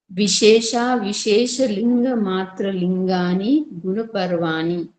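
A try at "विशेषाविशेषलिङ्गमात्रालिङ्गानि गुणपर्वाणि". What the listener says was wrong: बहुत बढ़िया जी।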